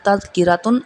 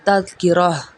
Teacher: پہ پہلے ہم نے اس کو پڑھا روانگی کے ساتھ تذکراتن، اگر ہم یہاں وقف کریں گے تو یہ جو اینڈ میں تا آئی ہے اس تا کو ہم ہا میں بدل دیں گے